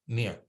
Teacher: some Sanskrit scholars, they will pronounce it as like an NY, nya